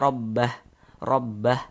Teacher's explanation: kalau misalkan kita berwakaf, kita berhenti tepat di mad silah qasirah ini, maka dia tidak berlaku tanda panjangnya